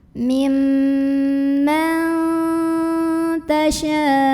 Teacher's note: Ada ikhfa aqrab, karena ada nun sukun yang bertemu dengan huruf ta. Maka nun sukunnya ini dibunyikan samar-samar, mau bilang ta sambil ada dengungannya. Mimma tasya'.